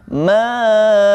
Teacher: Jadi cara membacanya ma'aghna, ya, ma-nya dipanjangkan 4 sampai 5 harokat, dan setelahnya bertemu huruf gha, dan berhati-hati dengan huruf gha-nya agar tidak memantul, dan setelahnya ada huruf nun yang berharokat alif kecil, maka huruf nunnya dipanjangkan 2 harokat atau dua ketukan.